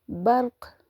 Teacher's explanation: را بولڈ، قاف بھی بولڈ اور کلکلا ہوگا